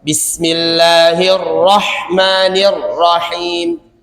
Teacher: huruf RO takrirnya dua getaran bukan dibikin kayak r-nya huruf bahasa Indonesia